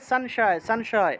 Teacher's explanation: আর কোনো একটা শব্দের মাঝখানে, কোনো একটা শব্দের যদি মাঝখানে থাকে অনুস্বার, তাহলে নয়ের মতো উচ্চারণ হয়। মনে করেন যে সংশয়, এই যে সংশয় শব্দটা আছে, উচ্চারণ হবে সংশয়, সংশয়।